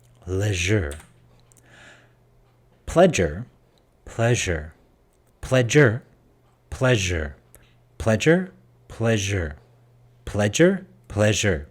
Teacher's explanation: you should be able to feel the vibration and the friction